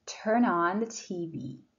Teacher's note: turn ends with n and that's a consonant and on starts with ah and that's a vowel so you can link them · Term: linking